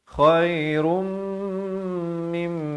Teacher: Asalnya ra tu tanwin di depan bunyi run. Tapi bila datang mim kena terus masuk beserta dengung dua harakat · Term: idgham bi gunnah